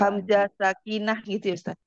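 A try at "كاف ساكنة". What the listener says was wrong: Bukan hamzah sakinah. Kaf sakinah. Azik. Azik. Bukan hamzah sakinah. Sakinah. Kaf sakinah. Kaf, kaf, kaf, kaf, kaf. Kaf sakinah. Azik.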